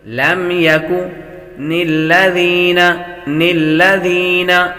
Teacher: ذال کے اندر سیٹی کی آواز نہیں آتی۔ لم یکن الذین کفروا وہ حروف مدہ ہے، حروف مدہ کو ایک الف یعنی دو حرکات کے برابر کھینچ کر پڑھتے ہیں۔